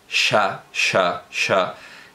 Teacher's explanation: la palatal con los labios redondeados